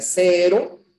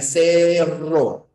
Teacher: es la vibrante simple y la vibrante múltiple